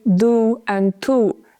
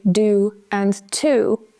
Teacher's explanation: In English, what we tend to do is we use the alveolar ridge, which is a little bit further back in the mouth. These are not dental sounds usually.